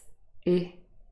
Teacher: Remember, unrounded means that our lips are not rounded when we form the sound I. If you have a look at my lips, I, they are not rounded. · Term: near close front unrounded vowel